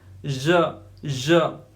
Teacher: It is post alveolar sound. तो जो teeth रीच है, रीच के पीछे जस्ट ये प्रोनाउंस होता है ज.